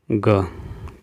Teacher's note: जो कंठ से बोले जाते हो, अल्पप्राण व्यंजन हो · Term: कंठ अल्पप्राण व्यंजन